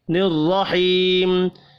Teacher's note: الرحیم، یہاں پر بھی را زبر کی وجہ سے پر پڑھا جائے گا، یا مدہ ایک الف کے برابر کھینچ کر پڑھیں گے، وف کی صورت میں میم ساکن پڑھا جائے گا۔